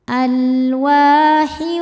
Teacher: Sebab ada tanwin kasrah menghadapi huruf wau. Cara bacanya tanwin dimasukkan ke wau alwahiu disertai bunyi dengung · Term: idgham bighunah